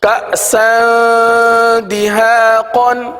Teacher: इसी तरह कअसन दिहाक़न, यहाँ पर सीन पर दो ज़बर की तनवीन है, तनवीन के बाद दाल हर्फ आ रहा है, और दाल हुरूफ इख्फा में से है, लिहाजा तनवीन पर इख्फा का कायदा होगा, यानी गुन्ना करके पढ़ेंगे।